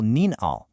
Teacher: Next, you absolutely must recognize the exact tones required. Nin uses a rising tone, and hao uses a dipping tone.